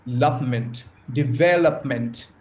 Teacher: And the stress the primary stress lies on the second syllable.